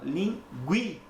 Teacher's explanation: Agora eu começo com menos intensidade e termino com mais intensidade na palavra linguiça. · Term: Ditongo crescente